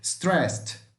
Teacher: É a palavra que tem apenas a última sílaba tônica, sílaba forte, stressed, stressed, stressed, tá? Aqui não fica com som de ED, mas com som de T, stressed, como se fosse um T no lugar do ED